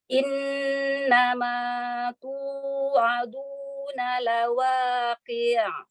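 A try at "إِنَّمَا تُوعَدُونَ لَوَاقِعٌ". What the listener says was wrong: Jangan memanjakan harokat pada qafnya, langsung ke bainnya pada huruf ain. Qi', qi'. Jadi jangan qi', qi', enggak ya. Langsung ya. Nun adalah huruf gunnah ya. Jadi jangan ditekan, gunnahnya jangan ditekan. Innama.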